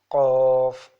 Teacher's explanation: Qaf, Qaf from deepest part of the tongue. It is pronounced from deepest part of the tongue, from the soft plate near the uvula